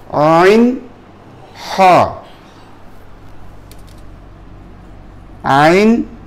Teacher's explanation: দুই নম্বর মাখরাজ আইন হা এই দুটো এই গলার মাঝখান থেকে আইন হা আইন এই হা দেখেন প্রথম হা টা এখান থেকে